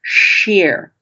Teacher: it starts with an S sound in which you turn your tongue to the roof of your mouth.